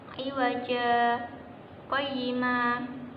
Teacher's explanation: Iwaja qayyima di situ ada tanda saktah yang berarti berhenti sejenak sekedar satu alif dan tidak boleh bernafas